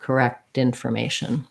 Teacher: if the the next word starts with a vowel i might link it and make more of a flap